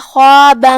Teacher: کلمت خواب میں یہاں حرف الخا ہے، خا کی ادائیگی حلق کے اوپر والے حصے سے ہے، وہ حروف التفخیم میں سے ہے، لہذا ہم اسے بھاری آواز میں ادا کریں گے.